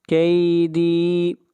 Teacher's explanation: دال کو کھینچ کر پڑھیں گے، یہاں پر یا مدہ ہے۔ متین، مد عارض وقفی۔